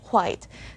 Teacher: you can literally hear the sound of the letter h at the beginning of the word